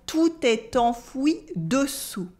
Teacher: Here the en in enfoui is a nasal en and we have the silent S at the end of dessous.